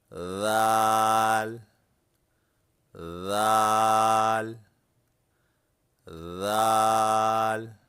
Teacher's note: दाल एक नरम आवाज है। यह हुर्फ जबान की नोक और दांतों से लगाने से अदा होता है।